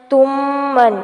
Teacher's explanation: میم ساکن کے بعد میم متحرک ہے، ادغام شفوی ہوگا